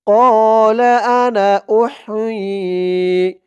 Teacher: টান দেওয়া যাবে না ক্বালা আনা উহ হামজা দিয়ে হা ধরবে হার আওয়াজটা গলার ভিতর থেকে চিকুন করে আনতে হবে